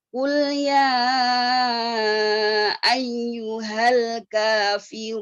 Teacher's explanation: Qul di pangkal lidah, qaf pangkal lidah